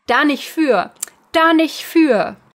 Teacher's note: commonly pronounced as da nicht für, so no T on the nicht.